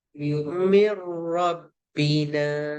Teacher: Dia tak jadi min, dia jadi mir. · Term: idgham bila gunnah